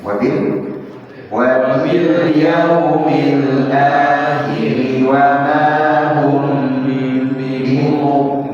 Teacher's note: perhatikan mimnya sukun ketemu dengan huruf ba, maka ditahan ya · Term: ikhfa asy-syafawi